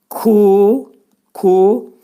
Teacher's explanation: Bu hərfin məxrəci demək dilin sonu və dilçəyin başlanğıcındadır. Ku demək bu hərfin məxrəci dilin sonu və dilçəyin axırındadır